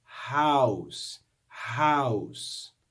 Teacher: the o and the u form a diphthong and we hear the sounds of both of those vowels